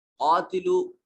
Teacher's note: قاف کو موٹا پڑھیں گے، حروف مستعلیہ میں سے ہے، اور الف مدہ ہے، اس کو لمبا کریں گے